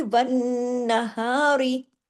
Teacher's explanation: इस हा की आवाज सीने की तरफ जाती है · یہاں غنہ ہو رہا ہے، کیوں، نون تشدید کے ساتھ ہے نا، بڑا غنہ ہوگا اکمل، آواز کو دیر تک ناک میں چھپانے کا نام غنہ ہے۔